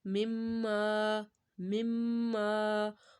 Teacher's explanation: ما کو ایک الف کے برابر آپ نے لمبا کرنا